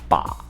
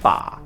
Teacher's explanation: Spelled b a with a falling rising tone, tone three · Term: tone 3